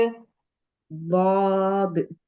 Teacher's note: இது நுனி நாக்குக்குரிய மகரஜ் கிடையாது இந்த எழுத்துக்கு நுனி நாக்கு மகரஜ் கிடையாது நாக்கின் ஓரப்பகுதி தான் சிஸ்டர்